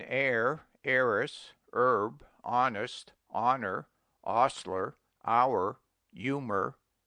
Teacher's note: Omit the H in air, heiress, herb, honest, honor, ostler, hour, humor, and also in their derivatives.